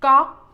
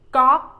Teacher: ก๊อก is like you say, you pronounce the word knock, knock in English, but the first letter you must start with the G sound and end with no K sound.